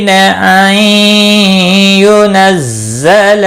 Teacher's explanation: نون ساکن کے بعد حرف یرملون کا یا ہے، ادغام باغنہ ہوگا۔ ينزل زا تھوڑا سختی کے ساتھ ادا کریں تاکہ زا ادا ہو جائے۔